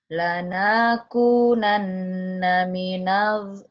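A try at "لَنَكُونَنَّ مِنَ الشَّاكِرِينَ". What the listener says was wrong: lanya pendek atuh neng. Lanakunanna minasyakirin.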